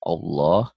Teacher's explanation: Lafadz Allah dibaca tafkhim, dibaca tebal, tebal, berbunyi O, Allah, seakan-akan ada W-nya, seperti bunyi O